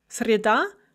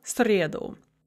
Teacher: The nominative is среда with the stress on the second syllable, but the accusative is среду with the stress on the first syllable. And this is a very common stress shift for disyllabic feminine nouns.